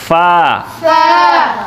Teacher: दांतों की ऊपर और दांतों की नोक नीचे वाले होंठों को टच होगी, लगेगी